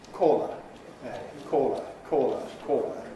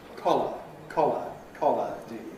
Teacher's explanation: the vowel in A, caw, has close lip rounding in modern RP